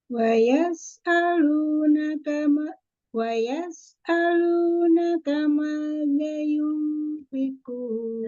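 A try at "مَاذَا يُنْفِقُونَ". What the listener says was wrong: Za yunfiqun. Zanya panjang.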